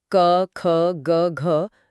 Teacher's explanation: यह आवाज एकदम गले की गहराई से आ रही है। · जो क वर्ग है, क, ख, ग, घ, जो लोग हमें सुन रहे हैं, वो अभी बोलकर महसूस कर सकते हैं कि ये आवाज एकदम गले की गहराई से आ रही है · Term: कंठ